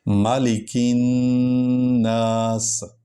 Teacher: سین کی آواز سیٹی سے نکلے، اور نون وہ اس پر شد ہے، اور اس کو 2 بار پڑھا جائے گا